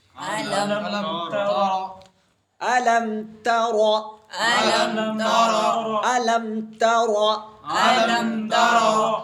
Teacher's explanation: اظہار شفوی. اب علم یہ میم ساکن کو جلدی پڑھنا، بغیر غنہ کے پڑھنا، اور ظاہر کر کے پڑھ کے دکھاؤ